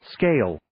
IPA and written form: skeɪl (Scale)